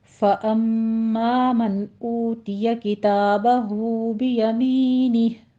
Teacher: पहले मीम मुशद्दद है, गुन्ने वाजिबा करेंगे, आगे अलिफ मद्दा अदा करना है, इसको अम्मा नहीं कहना, अम्मा 2 काउंट करना है दोनों पर।